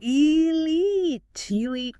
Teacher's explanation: It must be stressed on the second syllable.